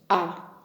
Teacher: इसका उच्चारण करते से मुख विवर पूरा खुल जाता है। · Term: विवर्त